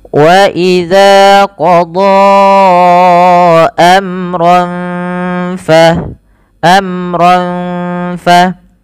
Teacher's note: Nah, kita lihat di sini setelah mad tabi'i adanya hamzah berupa datangnya huruf hamzah dan dia berada dalam lain kata, maka dinamakan dengan munfasil, artinya terpisah hamzahnya, bukan pada satu kata, maka wajib dipanjangkan 4 harokat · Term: mad jaiz munfasil